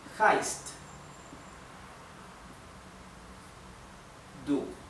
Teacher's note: La H en alemán se pronuncia como la H inglesa, como una exhalación